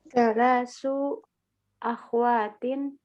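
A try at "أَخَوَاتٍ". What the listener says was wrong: Jamaknya ukhtun itu apa? Akho, ya. Akhowatin. Jangan disukun kho-nya, bukan akhwat. Kita terkadang agak salah kaprah ini kan, ya.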